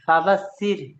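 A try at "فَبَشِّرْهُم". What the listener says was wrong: ওটা ছোট সিন নয়, ওটা ফোঁস। ফাবাসির হুম।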